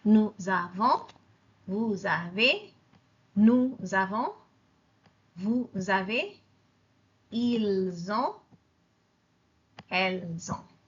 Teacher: The S becomes a Z and it attaches itself to the second word.